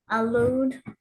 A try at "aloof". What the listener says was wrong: Aloof. Make sure you put the F on the end.